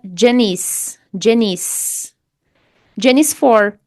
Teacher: Jen terminou com som de consoante, a letra N. Depois nós temos uma palavra que começa com som de vogal.